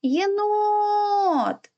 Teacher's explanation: який звук ми тягнемо найдовше звук О правильно Він стоїть у другому складі тому складом наголошеним є другий